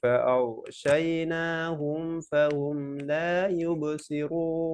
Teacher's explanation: ফাআগশা গয়নটা একটু হেভি করবেন, আওয়াজ জারি থাকবে